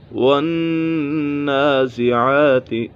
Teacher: کھڑا زبر حروف مدہ کے قائم مقام ہے۔ کھڑے زبر کو حروف مدہ کی طرح ایک الف یعنی 2 حرکات کے برابر کھینچ کر پڑھیں گے۔